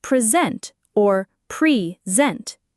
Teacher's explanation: The verb present has the stress on the second syllable, sent. This means sent is longer, louder, and often slightly higher in pitch.